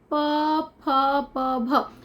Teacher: प भ तो इसमें हमारे लिप्स जो है हमारे होठों को होठ जो है वो आपस में मिलते हैं · तो इसमें हमारे लिप्स जो हैं, हमारे होठ जो हैं वो आपस में मिलते हैं। तो प वर्ग का उच्चारण जो है यहाँ पर हमें देखने को मिलेगा कि ये हमारे ओष्ठ से होते हैं, होठ, इसको हम होठ कहते हैं।